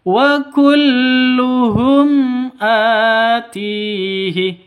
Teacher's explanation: jelas terang ya tidak boleh didengungkan tidak boleh dibaca panjang